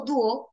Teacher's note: es una palabra que tiene la mayor fuerza de voz en la U